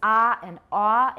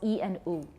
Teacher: vowels such as ah and OO in which the mouth is more open are about five decibels greater than the vowels e and o assuming all these vowels have been said with an equal degree